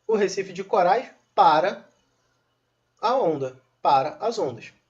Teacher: essa palavra para, agora é um verbo, não é mais uma preposição, agora possui sim tonicidade. Essa palavra tem tonicidade.